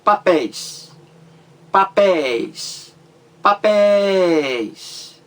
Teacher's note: Porque a sílaba mais forte é a última sílaba da palavra. Então o EI caiu aí na última sílaba da palavra mais forte. Então ele leva acento gráfico, acento agudo.